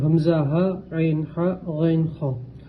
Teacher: حروف حلقی مطلب حلق سے ادا ہونے والے حروف، یہ 6 حروف حلق سے ادا ہوتے ہیں، اس لیے انہیں حروف حلقی کہتے ہیں۔